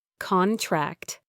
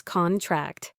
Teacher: Contract. Stress on the first syllable, noun, an agreement, versus contract. Stress on the second syllable, verb, to shrink or get smaller.